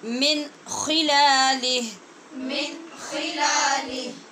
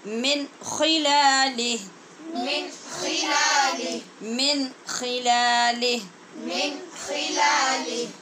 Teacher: اس لیے کہ نون ساکن کے بعد خا حروف حلقی میں سے ہے، لہٰذا اظہار حلقی ہوگا